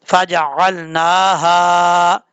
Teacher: ہا بھاری ساؤنڈ کے ساتھ پڑھا جائے گا، اس کو باریک پڑھنے کی ضرورت نہیں ہے